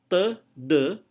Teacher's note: dalam te De udara terhalang oleh posisi lidah yang terangkat